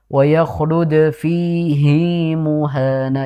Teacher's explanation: Fi-nya panjang, hi-nya juga panjang.